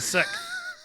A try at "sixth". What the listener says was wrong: You believe that the word SIXTH is pronounced SIKTH. So you're not actually putting like the S sound of the X in there.